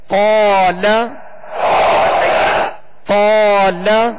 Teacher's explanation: لام پر جو زبر ہے زبر کو ادا کرتے وقت منہ اور آواز دونوں کھولیں گے اور بغیر کھینچے بغیر جھٹکا دیے ادا کریں گے